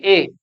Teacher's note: जीभ के अगले हिस्से की सहायता से बोले जा रहे हैं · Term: अग्र स्वर